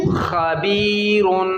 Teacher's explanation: پیارے بچوں جب ہم خبیر پر وقف کریں گے تو را کو باریک پڑھیں گے، اور جب ملا کر پڑھیں گے تو موٹا. ملا کر پڑھیں گے را کو موٹا پڑھیں گے، کیونکہ را کے اوپر کیا ہے؟ دو پیش. وقف کریں گے تو را کے اوپر سے دو پیش ختم ہو جائے گا، جزم آ جائے گی.